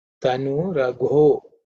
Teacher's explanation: This is the fourth letter in the Ka Varga. So it is Gha. Mahaprana. Okay. Aspirated form.